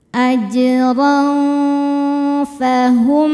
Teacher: Karena ada tanwin fathah bertemu dengan huruf fa. Cara bacanya tanwinnya disamarkan siap-siap ke fa. disertai dengungan. Dengung dan kesamarannya sama besar. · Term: ikhfa hakiki